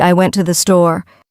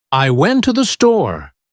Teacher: the words to and the become so weak that they almost disappear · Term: unstressed words